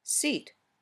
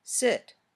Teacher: the muscles in your tongue are a little tenser or tighter when you say e than when you say I